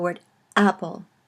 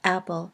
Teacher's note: just the stoppage of air that you have when you say the word apple you can see that your throat closes when you say Apple